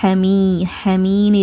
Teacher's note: இங்க இருக்கறது யா மத்தா இரண்டு ஹரக்கத்தை நீட்டி ஓதுங்க